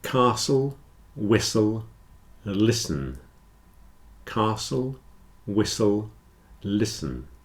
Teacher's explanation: you hear that in all of these the t is not pronounced especially in Words with a STL spelling Castle whistle listen Castle